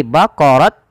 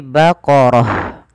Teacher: huruf ta yang bentuknya bulat ini kita namakan dengan ta marbutah Apabila ada Ta marbutah di akhir bacaan ketika wakaf diganti dengan huruf ha · ketika waqaf diganti dengan huruf ha, maka berubah menjadi bukan lagi baqarat tapi baqarah. Kita coba ulang lagi. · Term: ta marbutoh